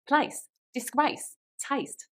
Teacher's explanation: the a sound goes a bit higher and wider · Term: Essex accent